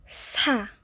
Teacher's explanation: It's the S sound, but unlike the S sound in English, there's a slight hissing to it.